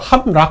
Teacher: 그래서 예를 들자면요. 함락 같은 경우에서 미음하고 리을이 만나면은 이 리을이 니은으로 바뀌는 경우를 들 수 있겠어요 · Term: 비음화 2번